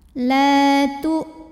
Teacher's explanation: hamzah sukun, suaranya syiddah tertahan ya. Tu mad tabi'i zahiri karena waw sukun sebelumnya dhammah, maka dibaca panjang taknya 2 harokat.